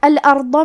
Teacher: کلمت الارض میں حرف الضاد ہے اور ضاد کی ادائیگی زبان کے کروٹ اور اوپر کے داڑھوں کی جڑ سے ہے۔ ضاد حروف تفخیم میں سے ہے، تو ہم یہ حرف کو بھاری آواز میں پڑھیں گے۔